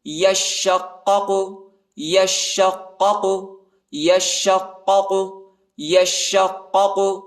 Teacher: شین اور قاف کو شدت کے ساتھ پڑھیں گے